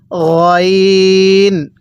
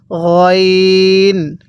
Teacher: গয়নটা মোটা করে পড়তে হবে। আমরা যেখানে গড়গড়া করি সেখান থেকে গয়নটা উচ্চারণ হবে গইন। আরেকবার আমার সাথে পড়ুন গইন।